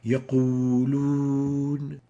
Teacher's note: we exaggerate the pursing of the lips when pronouncing the wow